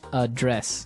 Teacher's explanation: So, the verb address has the the stress on the second syllable